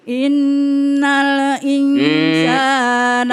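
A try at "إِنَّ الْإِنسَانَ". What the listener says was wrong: Itu ada pantulannya tuh. Nal iya, jangan pakai e.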